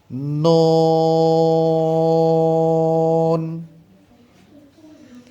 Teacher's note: জিহ্বার আগা তার বরাবর উপরে তালুর সঙ্গে লাগিয়ে উচ্চারিত হয়।